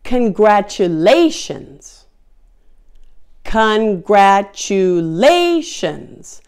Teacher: It has 5 syllables, and the primary stress syllable is lay.